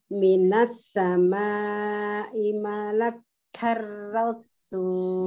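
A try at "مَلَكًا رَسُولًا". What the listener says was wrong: Malakar kaknya tidak double. Minas sama'i malakar. rasulah.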